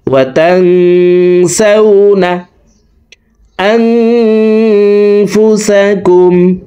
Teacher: এই নুন সাকিনকে নাকের ভিতরে লুকাইয়া গুন্নার সহিত পড়ব। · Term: ইকফা গুন্না